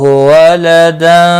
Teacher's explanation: خا مستعلیہ ہے پر پڑھا جائے گا، اللہ کا لام زبر کی وجہ سے پر ہوگا، ایک الف کے برابر کھینچ کر بھی پڑھیں گے کھڑی زبر کی وجہ سے۔ ولدن، تنوین کے بعد حروف اخفاء کا سینہ ہے، اخفاء حقیقی ہوگا، غنہ کے ساتھ پڑھیں گے